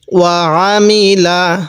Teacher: আইনটা একটু চাপ দিয়ে পড়ব কারণ অনেকে আমরা এই আইনগুলোকে হামজা পড়ে ফেলি